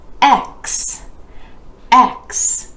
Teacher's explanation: The E vowel sound starts this one, dropping the jaw just a bit for E, then moving into a consonant blend, the K sound and the S consonant.